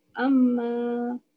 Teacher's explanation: dia punya dengung dia dulu 2 harakat, lepas tu panjang ma dia 2 harakat lagi